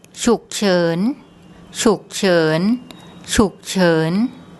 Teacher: a live syllable so it's high class initial consonant and live syllable which gives it a rising sound so low and rising